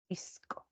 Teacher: Hay una aspiración de la S, ¿no? Muy suave